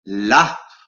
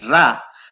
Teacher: la posición de la lengua es exactamente la misma. Lo único que pasa es que con la R se produce una vibración.